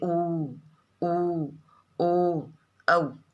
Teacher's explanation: वृत्ताकार या वृत्तमुखी स्वर, देखिए इनका उच्चारण करने पर होठों का आकार लगभग गोल सा हो जाता है